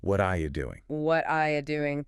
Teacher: And the word you shrinks down into this quick ya sound. So what are you doing physically transforms into what are you doing?